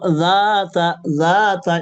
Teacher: যাতা এখানে, এখানে আলিফ, আলিফ মদ এটা ছুটে যাচ্ছে আপনার আপনার কাছে। তো যাতা, যাতা এক আলিফ টানবেন